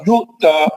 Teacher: حمزہ ساکنہ پر جھٹکا ہوتا ہے